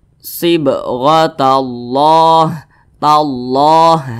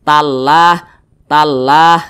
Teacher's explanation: maka kalimat Allah itu dibaca tebal dibaca tkhim jadi dibaca sibatallah tallahah seperti itu tebal seperti itu · Nah, maka kalau kita membaca Al-Quran, di belakang kalimat Allah ada huruf yang berharokat fathah atau berharokat dhammah, maka kalimat Allah itu dibaca tebal, dibaca tafkhim.